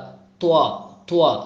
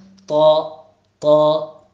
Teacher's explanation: തോ എന്ന് പറയുമ്പോൾ ഒരിക്കലും ചുണ്ട് വളയാൻ പാടില്ല, ചുണ്ട് സെൻറ്ററിലേക്ക് ഇങ്ങനെ കൂടാൻ പാടില്ല. തോ തോ തോ തോ വരുന്നത് നാവ് അണ്ണാക്കിലേക്ക് ഉയരുന്നു എന്നതുകൊണ്ടാണ് തോ ത രണ്ടും വ്യത്യാസമാകുന്നത്.